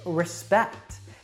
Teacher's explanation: now the first syllable that is not stressed has that schwa sound